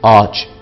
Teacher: Ağaç yerine A'yı uzatarak söyleriz.